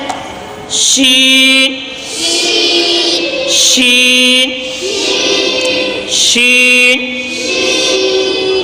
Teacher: जबान के दरमियान और ऊपर के तालू के दरमियान से शीन भी अदा होता है।